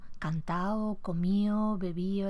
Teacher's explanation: La elisión o la pérdida de D, sobre todo en los participios ado, edo, ido